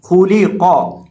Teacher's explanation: یعنی خا اور قاف کو موٹا کریں گے اور لام کو باریک کریں گے